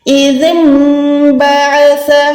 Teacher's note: جب بھی نون ساکن کے بعد با آتا ہے اس کے اوپر چھوٹی سی میم بنی ہوتی ہے تو ہم نے نون کو نہیں بلکہ میم کو یہاں پر پڑھنا ہے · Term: اقلاب کا قاعدہ